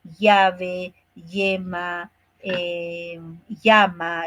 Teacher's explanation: aquí en Lima la elle no casi no la pronuncian